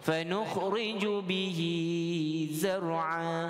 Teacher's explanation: kalimah bihi di situ dibaca dengan 2 harakat. Ini bacaan bagi mad sillah, sillah qasirah.